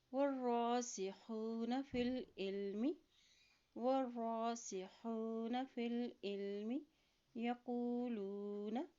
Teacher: واو کی زبر کو را کے ساتھ ملائیں، را کے اوپر جزم ہے اور را کے اوپر کھڑی زبر ہے تو اس کو ایک حرکت لمبا بھی ادا کریں گے، ٹھیک ہے۔